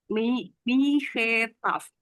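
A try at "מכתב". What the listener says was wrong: Mihetaf, mihetaf, tapi kalau dia di tengah-tengah dia tidak dibunyikan he, jadi dia jadi mik, miktaf, miktaf, surat, miktaf, miktaf, oke, miktaf. lihat di sini ada huruf kaf, taf, dan vet.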